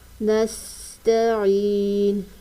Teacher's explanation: سین کو پڑھتے وقت سیٹی کی آواز آنی چاہیے. تا کے اوپر زبر کی حرکت ہے، اس کو کھینچ کر نہیں پڑھیں گے. · یہاں پر وقف کریں گے تو نون ساکن ہو جائے گا. وقف کرنے کی صورت میں اس کو 2 الف کی مقدار کھینچ کر پڑھیں گے